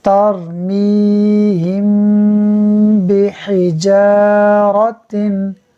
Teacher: میم ساکن کے بعد حرف با ہے، اخفاء شفوی ہوگا، یعنی میم ساکن میں ہم غنہ کریں گے۔